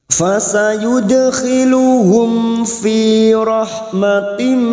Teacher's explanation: Kita uraikan dari mim sukun bertemu fa karena kita wasal, maka mim sukun bertemu fa idhar safawi. Mim sukun dibaca jelas tanpa mendengung.